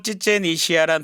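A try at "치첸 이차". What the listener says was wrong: 이시아가 아니고 이사예요. 치첸 이사. 격음이 없고 전부 다 경음으로 돼요. 그러니까 이치아가 아니고 이스아거든요. 이스아. 치첸 이스아고 그리고 마야 언어가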